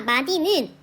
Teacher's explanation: 우리가 마디를 실제 발음할 때 마지라고 발음하지 않고 그대로 디귿으로 발음하죠. 그 이유는 두 번째 음절의 마디의 두 번째 음절인 디가요.